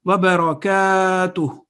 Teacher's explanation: In salam we say assalamu alaikum wa rahmatullahi wa barakatuhu. So that inverse dhamma at the end is not pronounced. Wa barakatuh.